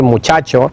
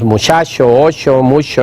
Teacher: la pérdida de fuerza articulatoria de la che por ejemplo no Y en vez de decir muchacho decimos muchacho